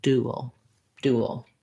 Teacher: end up with a little bit of a glide sound because the w glide is really moving from two positions it's moving from the u position to the schwa position · if i say it very quickly moving from ud up so in this vowel to vowel linking you're going to have a little bit of a w sound you're not going to have to intentionally put that in there